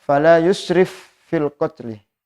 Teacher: berharakat sukun kemudian selanjutnya ada Fa yang hidup yaitu berangkat kasrah Jadi dibacanya dibaca dengan Idgham Kamil dimasukkan secara sempurna